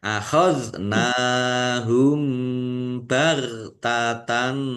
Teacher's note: Zal sukun bukan kolkolah, jangan dipantulkan.